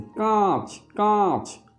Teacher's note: কাঁচ শব্দের আ যে ধ্বনিটি সেটা আপনা আপনি সানুনাসিক হয়েছে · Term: শত নাসিক্যী ভবন